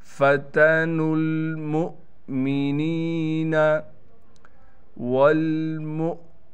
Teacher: واو پر آپ چھوٹا سا حمزہ دیکھ رہے ہیں، لہٰذا یہ حمزہ پڑھا جائے گا، واو کو ہم نہیں پڑھیں گے، حمزہ کو جھٹکے کے ساتھ پڑھیں گے